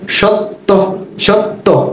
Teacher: যখন উচ্চারণ করতে যাই তটা কিন্তু দুইবার উচ্চারণ হয়, এবং শেষবার যখন তটা উচ্চারণ করি তখন এর সাথে ওকার চলে আসে।